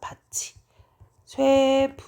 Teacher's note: 티귿은 이랑 만나면 치읓으로 바뀌죠?